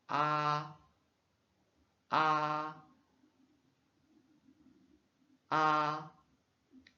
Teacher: c'est comme la voyelle A en français, mais un son plus bien ouvert